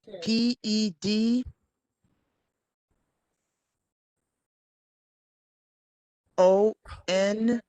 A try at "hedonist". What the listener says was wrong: Huh, not puh. Huh. Hedontist. You can pronounce it that way too if you like. You can pronounce it that way if you like. I said hedonist.